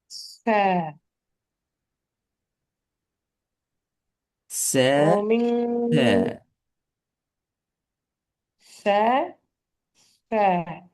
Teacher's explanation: ச என்று கொண்டு வந்தால் நாக்கு கண்டிப்பா ச- இரண்டு பல்லுக்கும் இடையால வெளியே வந்திக்கணும்.